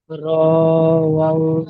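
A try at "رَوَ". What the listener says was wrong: রও টান দেবেন না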